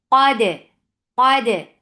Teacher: When you are giving shidda on dal, you are cutting off the sound and then open your apart your the makhraj. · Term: qalqala